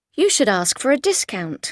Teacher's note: we stress shouldn't, the negative form, but we usually do not really stress should, yeah? We would rather stress the verb, ask, return, and so on, yes?